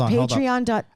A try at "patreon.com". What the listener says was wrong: I think you said patriot.com.